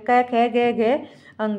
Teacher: जो हमारी कै वाली लाइन है वो हमारी कंठ ध्वनि होती है